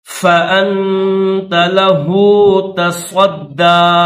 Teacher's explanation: صاد کو دال مشدد کے ساتھ ملائیں گے اور اس کو تھوڑا کھینچیں گے، 2 سیکنڈ کھینچیں گے، آخر میں یا خالی ہے، یا نہیں پڑھیں گے.